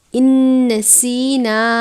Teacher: ان نسینا، ان نون ساکن ہے، اس کے بعد نون مشدد ہے، نون ساکن کو نون مشدد یعنی تشدید کی علامت ہے، نون مشدد سے ملا کر غنہ کر کے پڑھیں گے